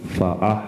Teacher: ha itu wasatul halki di tengah-tengah tenggorokan, hak bersih.